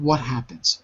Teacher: You're saying what happens without any letter between the what and the happens. You're dropping the T.